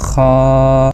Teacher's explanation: ये जो नुक्त वाला ख्वा होता है इसमें थोड़ी सी हमने अपनी जुबान का जो दरमियानी हिस्सा होता है इसको रगड़ना होता है। · یہ جو نقطے والا خا ہوتا ہے اس میں تھوڑی سی ہم نے اپنی زبان کا جو درمیانی حصہ ہوتا ہے اس کو رگڑنا ہوتا ہے، خا۔ تو اس کی جو آواز ہوتی ہے یہ حلق کے ابتدائی حصے سے ادا ہوتی ہے۔